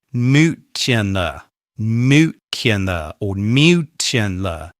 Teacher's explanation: people get confused with where the y is and say nuclear, nuclear, or nuclear. They add in an extra y sound. Make sure you get it right by saying nuclear, nuclear.